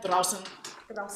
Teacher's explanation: Make sure it's draußen with s, not z.